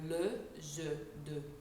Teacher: The jaw is slightly tense, so we are like this, forward. And the tongue basically rests, it's behind the two front teeth, which is the equivalent if you were to make the French, if you were to say the French word de, or le, je, de.